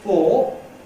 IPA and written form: fɔː (for)